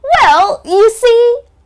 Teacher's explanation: try to use a high intonation when you use this phrase